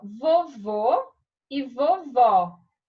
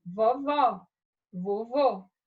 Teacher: acento gráfico então ou circunflexo é o som timbre fechado oi e o agudo vai dar um som com timbre aberto